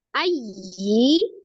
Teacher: ya tasdid dan waw tasdid hukumnya naber, ditinggikan, ditekan. Ayyi ya, untuk menerangkan dia bertasdid, beda dengan huruf yang tidak bertasdid.